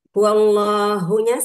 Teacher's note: Dibaca tafhim karena sebelum lafaz Allah itu hurufnya berharokat fathah ya. Apabila didahului huruf harokat fathah atau domah maka dibaca tafhim atau ada sebutan lain taghliz.